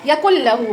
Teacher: دیکھیں یکل، نون ساکن کے بعد لام آیا، ادغام بلا غنہ ہوگا. یکل لہو بغیر غنہ کرتے ہوئے ہم ملائیں گے